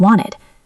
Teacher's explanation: In American English, after an N, the T often disappears. So wanted sounds like wanted.